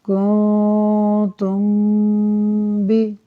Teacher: میم ساکن کے بعد با آ رہا ہے، لہٰذا اخفاء شفوی ہوگا، یعنی میم ساکن میں بھی ہم غنہ کریں گے۔